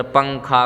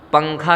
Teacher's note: جب اخفاء کرتے ہیں تو زبان کی نوک تالو سے ہٹا کر پڑھتے ہیں لفظ کو، زبان کی نوک تالو پہ نہیں لگے گی